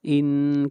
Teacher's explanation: ان کے اوپر غنہ کریں گے، نون مشدد ہے، اور نا کے اوپر مد منفصل ہے، اس مد کو 3 الف کے برابر کھینچ کر پڑھیں گے۔